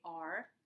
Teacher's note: it is made with the tip of the tongue curled back. Um, English only has one retroflex sounds.